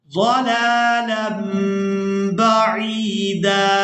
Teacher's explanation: तनवीन में जो नून की आवाज़ है इसको हमने मीम के साथ बदल देना है। इसकी वजह यह है कि तनवीन के फ़ौरन बाद बा आ गई है तो नून की आवाज़ को मीम के साथ बदलेंगे और इसको कहते हैं इकलाब करना।